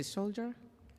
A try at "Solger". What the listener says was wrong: It's like Tigger. Hard G.